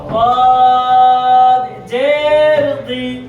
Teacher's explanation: জিহ্বার গোড়ার কিনারা উপরের মাড়ির দাঁতের গোড়ার সঙ্গে লাগাইয়া ضاد উচ্চারিত হয়।